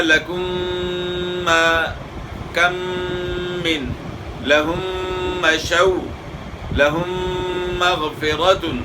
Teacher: یعنی دونوں میموں کو غنہ کے ساتھ ملا کر پڑھا جاتا ہے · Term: ادغام متماثلین